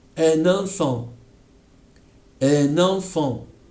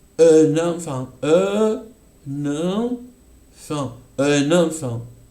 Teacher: vamos a darnos cuenta que escuchamos una N un poco más larga